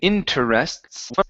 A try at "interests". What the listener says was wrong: Okay, so we do not want to pronounce the E.